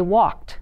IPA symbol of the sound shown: t